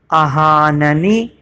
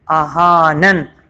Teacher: آہا ننی لکھا ہوا ہے یہاں پہ آہاننی، لیکن رکتے ہوئے یہ جو آخری والا نون ہے اس پہ سے زیر ختم ہو گیا، جزم آ گیا، یہاں پہ وقف اسکان ہوا ہے، یعنی آخری حرف کو ساکن کیا گیا، تو اب یہاں پہ آہاننی کی جگہ پہ ہم پڑھیں گے آہانن، کیونکہ ہم رک رہے ہیں۔